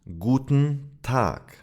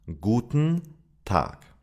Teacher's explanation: the reduction of the E in unstressed syllables such as N or L, usually at the end of words.